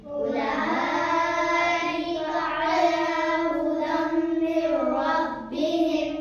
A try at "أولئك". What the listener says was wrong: أولئك पे मद है, इसको खींचना है.